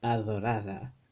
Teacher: the TH kind of th sound, th, the interdental fricative, that's voice.